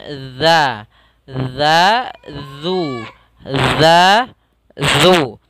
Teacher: kita baca dengan menempelkan ujung lidah kita menempel dengan gigi seri atas sehingga terbaca dengan za, za, zu, za, zu. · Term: dzal